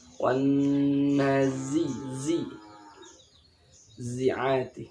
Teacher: Ya, ini za. Seperti desisnya lebah. Ini zai. Tapi tipis.